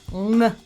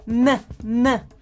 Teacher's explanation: But people often reduce the full ing, n, ending to n, which is made with the front of the tongue